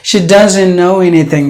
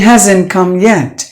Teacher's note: In British, they will pronounce the T's, but the Americans will not pronounce the T. They will silence it.